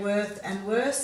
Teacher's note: when you say worth and worse, there's no air expelled from the mouth